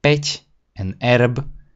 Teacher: the prehlasované a and the e sound the same. So ingrain that in your mind that those are 4 letters to represent 2 sounds.